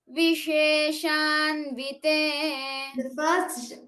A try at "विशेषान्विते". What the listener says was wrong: Your first sha is heard a little harder. You're saying Visheshan. It should be Visheshan.